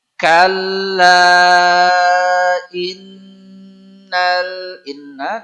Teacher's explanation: Nun tasdid tahan tidak boleh tergesa-gesa namanya gunah